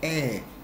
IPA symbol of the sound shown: æ